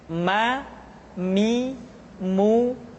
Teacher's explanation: huruf Ma diucapkan dengan cara merapatkan dua bibir